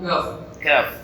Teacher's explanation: Pangkal lisan dan langit-langit namun agak keluar sedikit ke arah mulut.